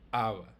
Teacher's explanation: You can see that it starts with an oclusão glotal, starts with the glottal stop. So awa. You have to kind of build up the air in your throat.